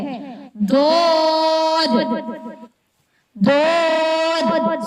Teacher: ضاد یہ بھی پر اور موٹا پڑھے جانے والا حروف ہے. ضاد، ضاد زبان کا ہافا کروٹ جب دائیں یا بائیں جانب اوپر والی 5 داروں سے ملے تو یہ حروف ادا ہوتا ہے. دائیں یا بائیں دونوں طرف، یا اندر آ گیا، ایک دائیں بھی لگ سکتا ہے بائیں بھی لگ سکتا ہے.